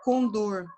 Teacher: a sílaba tônica é o dor, ela é uma palavra oxítona